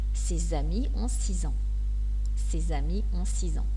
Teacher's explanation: Et vous devez savoir que les lettres S et X se prononcent Z quand ils font la liaison. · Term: la liaison « z »